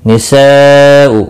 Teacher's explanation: मद्द मुत्सिल है, 4 अलिफ के बराबर खींच कर पढ़ेंगे।